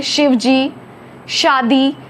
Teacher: बोलते हैं शिवजी शादी यह शब्द तालव्य श कहा जाता है आपके तालू से हवा निकल कर आपके दांत को पास करके बाहर आएगी